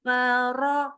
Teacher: rnya naikin pangkal lidah jadi memang bukan ro tapi ro naik pangkal lidah